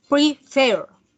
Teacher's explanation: Prefer tiene 2 sílabas y tiene el acento en la última sílaba.